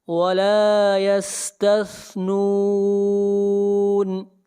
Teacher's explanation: سین کو سختی سے پڑھیں گے اور سا کو پڑھیں گے نرمی کے ساتھ۔ ولا یستثنون، یس آگے بڑھیے، آیت نمبر 19۔